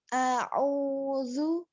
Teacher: Ingat-ingat hamzah ngambilnya di pangkal tenggorokan ya. Pangkal tenggorokan sini yang saya tunjuk ini jangan terlalu dalam ya.